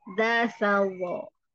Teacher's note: dasawo paling luar, artinya lidahnya melewati gigi keluar ya